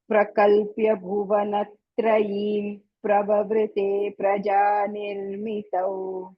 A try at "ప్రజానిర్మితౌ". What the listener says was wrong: ప్రవవృతే తర్వాత ప్రజాలో పకారం చాలా ఎక్కువ పకారాలు ఉన్నట్టు చెప్పాలి. రేప కంటే ముందు ఉంది కదా.